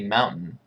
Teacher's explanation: when I say Mountain I don't even have a D sound